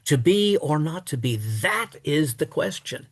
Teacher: Shakespeare has reversed the foot in the middle of the line, but by doing so, he throws the emphasis on that.